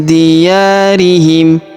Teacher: Huruf ya kita panjangkan dua harakat karena terdapat alif di depannya.